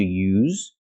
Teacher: we have the verb to use making the ZZ sound the vibration sound like zebra